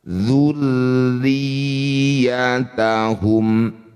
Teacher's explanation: Karena tanda syiddahnya ada dua berarti ditekannya juga dua kali.